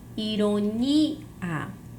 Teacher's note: eu vou ter como sílaba tônica a sílaba ni, ironia. Eu tenho uma paroxítona.